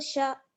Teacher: नून साकिन की आवाज़ को छुपा लेते हैं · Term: इख़्फ़ा